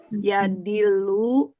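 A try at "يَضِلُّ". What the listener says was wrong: Lu-nya pendek, Bu.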